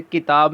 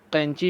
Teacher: تو یہ دونوں کاف ہیں لیکن ان کی ادائیگی میں فرق ہے۔ جو ڈنڈے والا کاف ہے، کتاب والا کاف ہے، اس کو ہم باریک پڑھتے ہیں، اور جو دوسرا دو نقطوں والا کاف ہے اس کو ہم پر پڑھتے ہیں